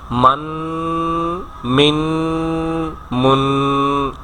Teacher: اسی ساؤنڈ کو 3 سیکنڈ کے لیے پروناؤنس کرتے جانا، اس کو غنہ کہا جاتا ہے، جو کہ منہ اور ناک سے جس کی آواز نکلتی ہے